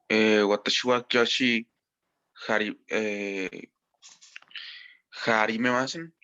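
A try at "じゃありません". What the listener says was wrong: Si aquí este JA lo pronuncias ya, ¿por qué acá lo cambias a ja?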